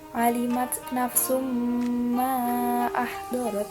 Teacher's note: Pada bacaan summa nah ini terdapat hukum tajwid idgham bi'unah karena ada tanwin dumah bertemu dengan salah satu huruf idgham bi'unah yaitu mim. Dibacanya dengan berdengung.